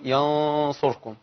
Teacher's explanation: صوت الصاد برضو ظهر في الغنى، فده اللي بيميز الاخفاء من الاظهار.